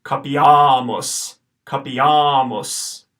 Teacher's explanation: Okay, so the pronunciation for these, this first word, the first A that you see in the word is short, the second A that you see is long. This word will be pronounced capiamos. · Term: long A